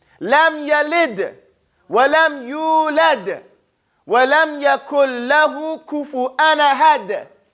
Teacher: You hear the daal is resounding over and over again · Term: qalqala